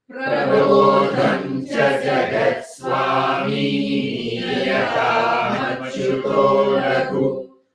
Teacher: Swami, ni, everything is dirgha. But laghu is hrasva, short.